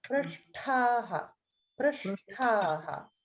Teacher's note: in prashtaha, the ta is actually mahaprana